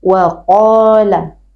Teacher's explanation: Jadi qaf tidak maju karena keluar dari pangkal lidah.